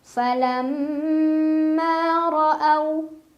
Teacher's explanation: ra dibaca secara tafkhim karena ra berbaris fathah, jadi bacanya tebal. Ra'au, au ada harf lin karena ada waw sukun sebelumnya fathah, dibacanya dilunakan.